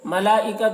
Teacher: حرف مد کے بعد حمزہ اسی کلمہ میں ہے تو مد متصل ہوا. مد متصل کو 3 4 الف کے برابر کھینچ کر پڑھیں گے